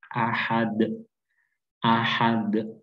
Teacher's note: Kemudian di akhir ayat, di setiap ayat di surat Al-Ikhlas kita temukan kembali huruf dal, yang mana apabila kita matikan atau kita wakafkan di akhir ayat, maka kita harus memantulkan huruf dal ini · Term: qalqalah